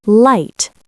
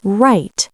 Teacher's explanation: R float. Notice the tongue. Touches on light. Floats on right.